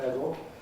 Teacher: Syllabic L in words like medal, an alternative to medal. We generally speaking recommend people to use syllabic L here, medal, but again I'm sorry to say the language is changing.